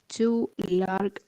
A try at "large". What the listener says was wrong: Large. Large. Not ga. It's ja. Large. It is not ga. If you have time, I'm going to show you when we should say ga and when we should say ja. The G sound.